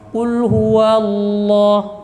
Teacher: Jadi bibirnya dibiarkan ya. Kemudian pangkal lidahnya sudah langsung naik ketika menyebutkan wa.